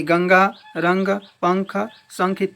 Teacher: इनका उच्चारण करते समय वायु का जो निकास है नाक से होता है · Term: अनुस्वार